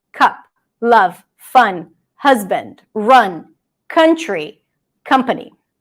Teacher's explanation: The cup sound is very similar to the schwa, only the mouth is a bit more open and it's always stressed.